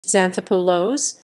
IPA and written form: ksanˈθopulos (Xanthopoulos)